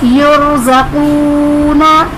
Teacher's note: युरज़क़ूना, रॉ साकिन से पहले हर्फ पर पेश है तो रॉ को पुर पढ़ेंगे। · क़ाफ हुर्फ मुस्तालिया पुर पढ़ेंगे